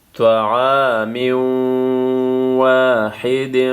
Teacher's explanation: یہاں پہ ادغام مع الغنہ تنوین کے بعد واو آئے